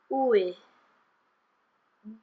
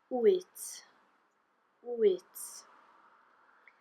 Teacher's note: Okay, now when you have WY, this depends, there's the rising sound, so you'll have the oo, and then an I, and it goes ui.